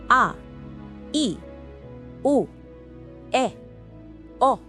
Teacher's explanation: These are pronounced briefly like ah, E, oh, E, oh. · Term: short vowels